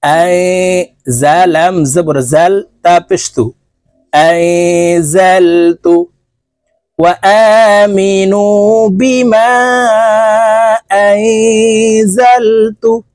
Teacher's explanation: নুন সাকিনের পরে ইকফার হরফ যা আসছে তাই এই নুনকে নাকের ভিতরে লুকাইয়া গুন্নার সহিত পড়ব